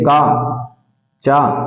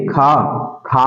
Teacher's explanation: खा में आप उच्चारण करके देखेंगे तो आपके मुख से हवा ज्यादा निकलेगी और वोह हवा ज्यादा निकलने का मतलब है यह महाप्राण वण